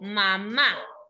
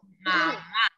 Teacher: ¿Dónde suena más fuerte? En la segunda A.